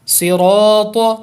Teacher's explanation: جو تین حروف ہیں صاد، را، تو، یہ تینوں پر ہو رہے ہیں۔ یہ کیوں پر ہو رہے ہیں کہ صاد اور تو یہ تو حروف مستعلیہ ہیں، ان کو تو ویسے بھی ہم نے ہر حالت میں موٹا پڑھنا ہے پر کر کے، لیکن را کو ہم پر کر رہے ہیں۔